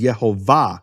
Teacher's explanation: The emphasis of the word is in the final syllable. It's marked that way in all Hebrew manuscripts with vowels.